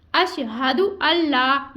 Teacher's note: यहाँ पे नून साकिन के बाद लाम आया तो यहाँ पे इदगाम का कायदा लग रहा है, गुन्ना नहीं करेंगे। उसके बाद मद जो लग रही है वो मद्दे मुनफसिल लग रही है तो यहाँ पे हमने इसको 2, 2.5, 4 अलिफ की मिकदार के बराबर खींचना है।